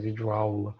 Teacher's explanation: o vídeo ele vai perder a sílaba tônica no vi, não vai ser mais videoaula, né, vai ser videoaula.